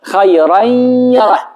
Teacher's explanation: Shkrihet nuni, bëhet je, po me i çik, shije të zërit hundor